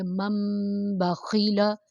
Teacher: نون کی آواز کو ختم کر کے میم میں بدل دیا جائے گا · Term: اقلاب